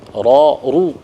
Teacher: ketika dia berharakat fathah dan damah maka dia dibaca tafkhim ro ru ketika dia berharakat kasrah maka dia dibaca tarkik tipis